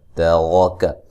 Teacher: را کو موٹا ادا کریں گے